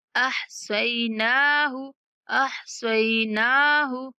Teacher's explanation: स्वाद के बाद या लीन है और नून के ऊपर खड़ा ज़बर है, तो नून को थोड़ा खींचना है